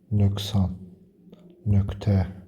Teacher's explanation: q samitdən sonra kar samit gələrsə q samiti k səsi verəcək